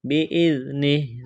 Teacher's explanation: چھپائیں گے، غنہ کریں گے، بِإِذْنِهِ، زال کو نرم کرنا ہے، وقف کریں گے، ہا کو ساکن کریں گے